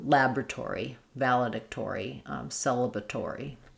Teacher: we get some secondary stress on the or syllable. So it keeps its full or sound.